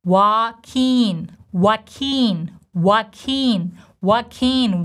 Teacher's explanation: the stress goes on the second part of his name, keen, long E sound, tense E